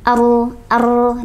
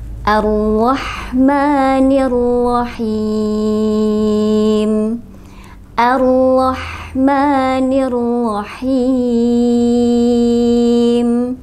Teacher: kesalahan secara umum yang sering terjadi getaran pada huruf ro ini terlalu banyak